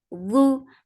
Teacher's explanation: Ai, ain from your throat for kasra give e sound. Lu, for damma circle your lips, the sound is short